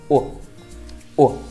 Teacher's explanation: các bạn sẽ đọc giống như chữ u ở Việt Nam. Các bạn sẽ đọc ngắt thật là nhanh nha, u, u. Chúng ta có một vài ví dụ như sau. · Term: âm u ngắn